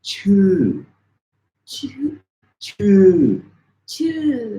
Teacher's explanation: it's like saying a U, but with your lips unrounded. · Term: unrounded U sound